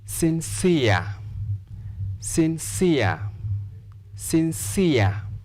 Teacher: There is a combination of E and R. Therefore, we'll stress the second syllable because of ear. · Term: syllabic stress